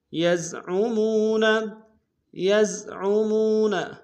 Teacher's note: الی الذین یزعمون، یزعمون، یا کو زا کے سامنے لائیں گے، عین کو گہرائی سے ادا کریں گے